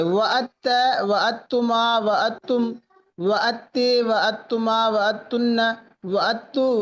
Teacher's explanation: دال اور تا کا جو مخرج ہوتا ہے وہ قریب ہوتا ہے، تو ہم نے کیا کر دیا، دال کو تا کر کے تا کو تا میں ادغام کر دیا ، ہوگا وہی دال جو ہے نا اس میں تا مشدد